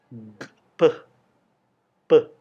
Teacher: saat anda mengucapkan bunyi pe pe secara alamiah anda akan menggunakan kedua bibir Anda Anda akan mengatupkan bibir atas dan bawah kemudian melepaskan udara